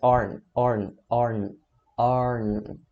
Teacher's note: O som, ele é mais curto e ele é mais nasal do que o are, certo? Então isso aqui, a diferença é que no finalzinho da pronúncia, você vai nasalizar mais o final dele, tá?